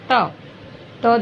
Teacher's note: त दांतों से बोला जाता है, ठीक है। जीभ और दांत दोनों का मिलन हो रहा है इसमें